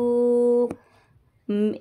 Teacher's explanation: नून साकिन के बाद रॉ आ रहा है, इसलिए यहाँ पे गुन्ना नहीं करेंगे